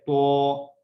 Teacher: ایک ہے تا جب میرا منہ چوڑائی کی طرف سیدھا ہے تا، ایک ہے تو میں جب منہ گول کرتا ہوں خود وہ تا جو ہے تو بن جاتا ہے